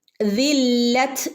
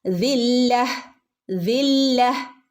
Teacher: നിർത്തുകയാണെങ്കിൽ ആ തന് അവിടെ സൗണ്ട് ഇല്ല അവിടെ തന് ഒരു ഹ സൗണ്ട് ആണ് വരുക